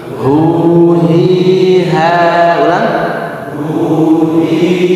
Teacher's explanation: Awal pengucapannya menekan hu, dan suaranya ngebas hu besar.